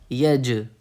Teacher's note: کیونکہ جیم پہ جزم ہے، قلقلہ ہوگا